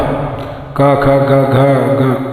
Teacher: ये जीव के मूल से कंठ से निकलते हैं